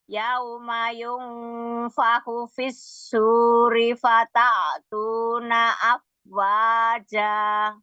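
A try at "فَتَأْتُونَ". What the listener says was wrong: Nah, fatanya Hamzah tuh bukan ain, bukan fata, bukan fata tuna, dihentak aja sedikit. Fata tuna, fata, jangan jadi kayak ain.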